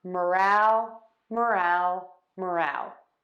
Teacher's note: to say morale which is enthusiasm of a group we are going to stress syllable number two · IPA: /məˈræl/